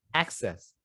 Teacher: you're using and which case this is the noun noun form so you should put the stress on the first syllable